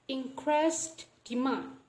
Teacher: So we don't pronounce the D sound. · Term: deletion